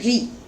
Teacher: री जो रिकार है वो मूर्धा के माध्यम से बोला जाता है, मूर्धा की सहायता से बोला जाता है।